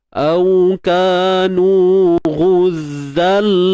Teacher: Baik, tanwin bertemu lam, IBG. Masukkan tanwin ke dalam lam tanpa dengung. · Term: idgham tanpa dengung